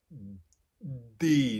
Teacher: dull with the tongue making it a very dull sound d so i'm kind of pressing my tongue a little bit into the back of my teeth the reality is i think i'm doing both dentalizing and laminalizing